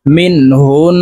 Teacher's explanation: নুনের উপরে তাসদা আছে তো নাকের বাঁশি থেকে গুন্না করে পড়বো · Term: ওয়াজিব গুন্না